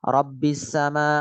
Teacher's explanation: nun ketemu ra, idgham bi ghairi gunnah atau bila gunnah